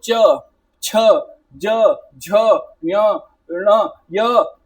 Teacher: जहां भी आप इन वर्णों को बोल रहे हो यहां पे आपकी टंग जो है बेसिकली किसको टच कर रही है? तालु को टच कर रही है। टीथ के अपर पार्ट को अंदर से टच कर रही है। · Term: तालव्य